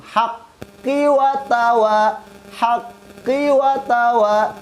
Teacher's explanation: Ayat ketiga ketika diwasol pun bil haqqi watawa, ki-nya juga dibaca pendek.